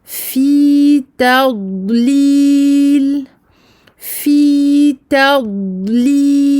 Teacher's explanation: Il n'y a aucune transition entre le dad et le lam. On passe directement sans provoquer aucun son entre les deux.